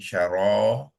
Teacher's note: Sebab dia berfungsi sebagai alif mad di dalam kalimah tu, dan kita akan panjangkan bacaan bunyi ra tu kepada 2 harakat